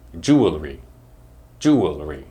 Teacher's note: the word other people might say jewelry which is wrong because there is no vowel between the L and the r sound